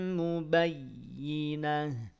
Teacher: Ya-nya ditekan. Yang ditekan ya-nya bukan ba-nya